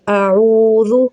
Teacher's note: او میں واو مدہ ہے، واو ساکن سے پہلے پیش ہے، واو مدہ کہلائے گا۔ اس کو 1 سے 2 الف کے مقدار کھینچا جائے گا۔